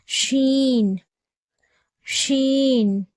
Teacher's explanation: அடுத்ததாக பார்க்கக்கூடிய எழுத்து ஷீன் ஷீனுடைய மகராஜ் பிறப்பிடம் ஜீமுடைய மகராஜ் பிறப்பிடம் மாதிரியே நம்ம நாக்கினுடைய நடுப்பகுதி அதற்கு நேர் மேல்முரசு இருக்கு இல்லையா அதுல படும்பொழுது ஷீன் என்ற உச்சரிப்பு வெளியாகும்